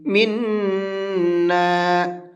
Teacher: یہ پوائنٹ اس لیے بتا رہا ہوں، اس لیے کہ یہاں پر لوگ اکثر غلطی کرتے ہیں، اس کو کھینچ کر کے نہیں پڑھتے ہیں، اور نون کے اوپر تشدید ہے تو غنہ کریں گے